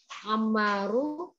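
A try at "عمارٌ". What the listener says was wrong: Amarun, bagus. Amarun. Katanya un.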